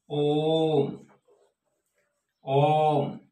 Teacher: 3 गुना समय लगता है, उन्हें हम प्लुत स्वर कहते हैं